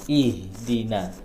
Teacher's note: makhrajnya di tenggorokan bawah, ya. Dan tidak ada halangan. Ya, tenggorokan bawah.